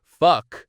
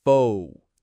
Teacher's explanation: You need to stretch that O. It's not a quick, short O. It's not fuck. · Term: long O sound